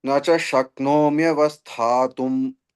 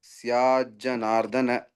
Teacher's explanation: Sya is dirgha, then double ja, nardana. Ka priti syajanardana.